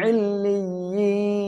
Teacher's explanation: ইল্লিয়িন এখানে তিন আলিফ টেনে পড়বো, এখানে সাকিন হচ্ছে এক আলিফ মদের পরের অক্ষর, অক্ষের কারণে কি হবে, তিন আলিফ টেনে পড়বো।